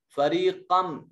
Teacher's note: نون تنوین کے بعد حروف یرملون میں سے میم ہے، ادغام بالغنہ ہوگا